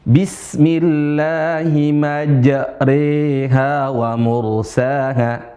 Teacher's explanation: pakai al-imalatul kubra, imalah yang besar, majri, bukan majraha